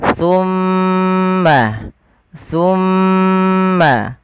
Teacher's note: ujung lidah ujung lidah kita menempel dengan gigi seri atas kita